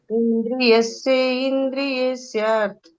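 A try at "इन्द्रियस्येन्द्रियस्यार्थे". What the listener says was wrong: ಇಂದ್ರಿಯಸ್ಯೇಂದ್ರಿಯಸ್ಯಾರ್ಥೇ ಅದು ಸೇರ್ಸ್ಕೊಂಡು ಹೇಳ್ಬೇಕು. ಇಂದ್ರಿಯಸ್ಯೇಂದ್ರಿಯಸ್ಯಾರ್ಥೆ ಬಿಡಿಸಿ ಹೇಳ್ಬೇಕು ಅಂದ್ರೆ ನೀವು ಅಲ್ಲಿ ಇಂದ್ರಿಯಸ್ಯಾರ್ಥೆ ಅಂತಂಗೆ ಹೇಳ್ಬೇಕು.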